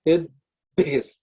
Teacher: So the first part of the letter is unaspirated. The second part of the letter is aspirated.